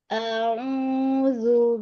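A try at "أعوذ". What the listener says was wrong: A-nya dibuka lagi. Au buka lagi. Infitah. Au. Au. Perjelas hamzahnya. Au. A-nya. Au. gan dipanjangin. Hamzah itu punya sifat namanya syiddah. Syiddah itu kuat ya. Sehingga bacanya tidak boleh di ayun. Au. Kalau A jadi panjang matobi'i. Tapi langsung. A'udzu. A'udzu.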